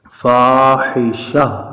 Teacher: وقف کرتے ہوئے گول تا کو ہا ساکن سے تبدیل کریں گے۔ یہاں پہ ہم نے وقف کیا تو گول تا کی جگہ ہم نے ہا ساکن پڑھا، فاحشہ۔